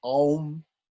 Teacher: It becomes O. So the A and the U coalesce, they come together and form Om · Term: Sandhi